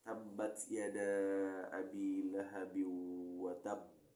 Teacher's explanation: Ada qalqalah akbar, hurufnya hidup dan ada tasydid.